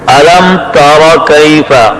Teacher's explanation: را پر زبر ہے کہ را موٹی ادا ہو اور پشت زبان تالو سے لگے, ہون گول نہ ہوں